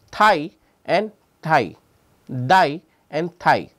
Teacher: called the intad dental so intradental consonants are those which are produced by protruding the tongue between the upper and the lower teeth